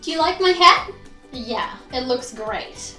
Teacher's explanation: if we're being sarcastic saying something that we don't really mean then we'll really overdo that falling intonation